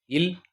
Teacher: மேல்வாய் பல்லின் அடியை நாக்கின் ஓரங்கள் தடித்து நெருங்குறதுனால இல் பிறக்கிறது. இல் இது மேல்வாயை நாக்கின் ஓரங்கள் தடித்து தடுவதால் பிறக்குது.